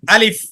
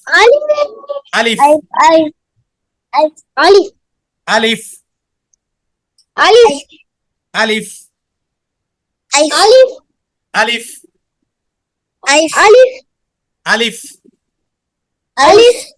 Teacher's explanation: আলিফটা যখন আমরা উচ্চারণ করব তখন তাড়াতাড়ি করে উচ্চারণ করব, ঠিক আছে? আলিফ করে টান দেব না, বলতে হবে আলিফ।